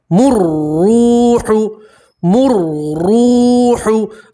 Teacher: را کے اوپر پیش ہے تو را کو آپ موٹا پڑھیں گے, پور پڑھیں گے